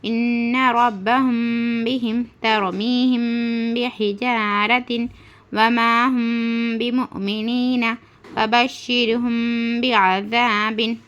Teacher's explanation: میم ساکن کے بعد با آئے تو غنہ کے ساتھ اخفاء ہوگا، اس کو اخفاء شفوی کہتے